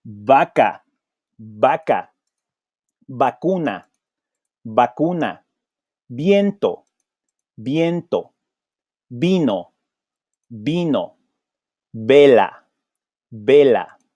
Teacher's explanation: we use the same bilabial sound.